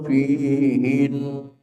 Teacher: Fihin ditahan karena gunah musyaddadah.